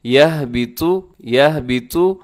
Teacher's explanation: اس میں طا موٹا پڑا جائے گا، طا کو باریک نہ کیجیے گا